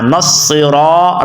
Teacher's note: اہدی نصرا، نص یعنی صاد آپ نے پڑھنا ہے، نصرا، را کو لمبا کرنا ہے کیونکہ را کے آگے الف ہے